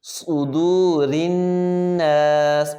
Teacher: صاد ہے، اس کو موٹا بھی کریں گے اور سیٹی کی آواز بھی نکالیں گے. صدور الناس.